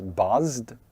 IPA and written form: bʌzd (Buzz)